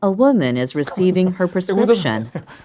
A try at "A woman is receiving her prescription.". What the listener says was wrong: A woman receiving 강세 뒤에 있어요. receive가 아니라 receive. 받다 이게 받다 이렇게 뒤에 있어 강세가 이렇게 들어가고요.